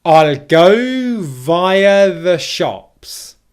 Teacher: Can you hear how 'go' and 'shops' are the stress there?